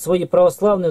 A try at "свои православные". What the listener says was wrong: Может, свои православные, ударение на свои.